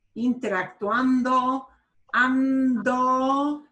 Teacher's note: when you have N and D next to each other, it kicks the D back into what we would consider a normal D, like an English D sound. Interactuando, ando, the N goes right into the D, ando.